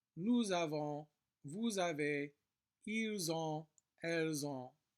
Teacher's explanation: we do pronounce the S here since it's followed by a vowel, but it will sound like a Z